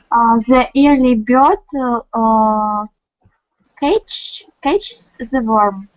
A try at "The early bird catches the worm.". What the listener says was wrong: Catches, yeah.